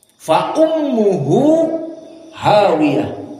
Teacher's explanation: Here ha, the first ummuhu dhammah with harakah, ummuhu, and the second ha, hawiyah fathah. So between hu, the first dhammah, ummuhu, and ha with fathah, make idgham. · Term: idgham al-kabir